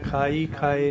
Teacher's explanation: ਹਾਹੇ ਦੀ sound ਨਹੀਂ ਨਿਕਲਦੀ ਇਹਦੇ ਵਿੱਚੋਂ, ਖਾਈ ਖਾਏ ਦੇ ਵਿੱਚ ਈੜੀ ਦੀ ਸਾਊਂਡ ਨਿਕਲਦੀ ਆ